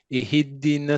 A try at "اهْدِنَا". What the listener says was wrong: No, wait. Not ihiddina. You make it like echoing.